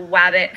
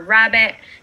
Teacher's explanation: w for pre-vocalic r so wabbit for rabbit and cluster reduction omission of s and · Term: gliding